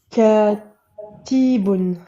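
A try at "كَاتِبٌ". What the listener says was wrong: Ne prolonge pas. Oui, tu prolonges le K, mais pas ta. T'as dit ti.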